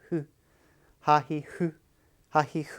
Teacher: the who is kind of a mix between the h and f sound